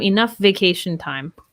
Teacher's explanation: the f and the v kind of blend together we link them